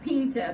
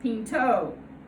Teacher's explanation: the unstressed a of Pinta becomes a stressed Oh